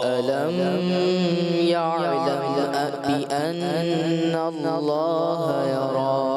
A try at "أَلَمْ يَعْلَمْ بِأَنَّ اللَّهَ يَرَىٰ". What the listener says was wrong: علم میں آپ نے اظہار شفوی غنہ کر دیا، اخفاء شفوی چھوڑ دی. آپ نے اظہار شفوی غنہ نہیں کرنا، اخفاء شفوی میں کرنا. علم يعلم بأن الله يرى علم میں غنہ نہیں کریں گے. اور یعلم بأن اللہ، کیوں؟